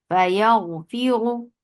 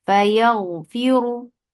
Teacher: را از heavy because را کے اوپر دمہ ہے، ہم اس کو ہیوی کر کے پڑھیں گے